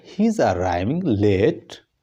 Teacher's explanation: हम लेट के ऊपर जब उसकी टोन को ऊपर करेंगे, उस पर टोन को ऊपर राइज करेंगे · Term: क्वेश्चन